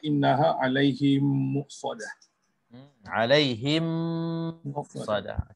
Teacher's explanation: mim mati bertemu dengan huruf mim yang berbaris. Bacaannya dengan 2 harakat, seperti innaha alaihim muqsadah. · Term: idgham mithlain saghir